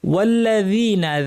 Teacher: যাল soft করে জিহ্বার কিনারা উপরের দাঁতের কিনারা লাগিয়ে